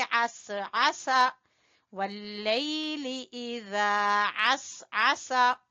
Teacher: आइन को गले से निकालेंगे